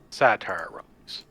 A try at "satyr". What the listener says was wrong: You know it's pronounced satyr, right? It just sounds like you're saying satire over and over again.